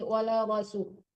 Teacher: Ya, rohnya ditebalkan ya. Wala rasu, tebalkan rohnya, jangan ra, tapi roh